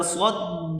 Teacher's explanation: صاد کو دال کے ساتھ ملا کر سختی کے ساتھ پڑھیں گے، صاد کو موٹا کریں گے